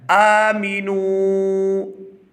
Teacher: واو ساکن ہو اور اس سے پہلے پیش ہو حرف، چاہے اس کے ساتھ کوئی بھی مل رہا ہو، تو اس کو 2 سے 3 سیکنڈ کھینچ کر ادا کرتے ہیں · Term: واو مدہ